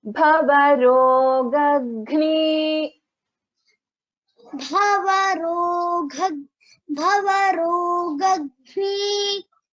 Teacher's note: First ga is Alpa Prana, ga, normal ga, okay? Then the second one is Mahaprana, ga. Bhavarogagni.